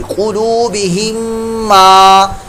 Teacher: मीम साकिन के बाद आगे मीम, दूसरी मीम आ गई तो इदगाम शफवी, इदगाम में शफवी का कायदा लग रहा है, यहाँ पर गुन्ना होगा